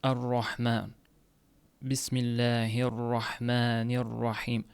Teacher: ro harfini ingliz tilidagidaqa talaffuz qilish, ya'ni umuman yutib yuborilishi. Misol uchun ar-rohman, bismillahirrohmanirrohim ro harfi man chiqmay qoladi.